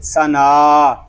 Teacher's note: نون کو ایک الف تک کھینچ کر پڑھیں گے